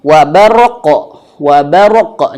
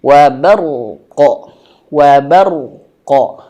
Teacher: Jadi rnya itu sedikit mengalir ya. Karena ro ini dia memiliki sifat yang namanya di antaranya bainiyah atau tawassut pertengahan antara syiddah dan ee arkhawah. Maka teman-teman ro ini dialirkan sedikit wa barqo baru qofnya qo ah gitu ya.